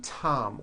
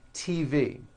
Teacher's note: the t- sound is an unvoiced sound like in the name Tom